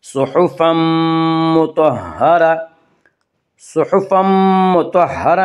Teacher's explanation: صحفا مطہرہ میں ادغام بالغنہ ہوگا